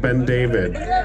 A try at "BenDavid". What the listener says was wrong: It's one word. Wrong number of syllables.